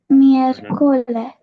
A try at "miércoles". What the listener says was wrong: Very good. Miércoles. Okay. So pronounce it again.